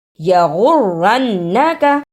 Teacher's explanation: یغرنک، یا پر زبر، اسے جلدی پڑھنا، غین پر پیش لیکن اسے را سے ملانا ہے، را پر شد ہے، را پر زبر لیکن اس کو بھی نون سے ملانا ہے، اس پر بھی شد ہے، نون پر زبر، اسے جلدی پڑھنا اور کاف کو بھی جلدی پڑھنا۔ شد کو ادا کرنے کا طریقہ، سختی کے ساتھ ذرا رک کر لیکن پڑھتے ہوئے درمیان میں آواز نہ ٹوٹے